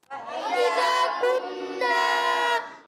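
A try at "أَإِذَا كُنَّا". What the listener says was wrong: کننا کہہ گے، اَإِذَا كُنَّا، گڈ۔ پہلے آپ کے ہونٹ مل جاتے تھے، میم کی آواز آتی تھی، اس وجہ سے آپ کو یہ درست کروانا پڑا۔ اَإِذَا كُنَّا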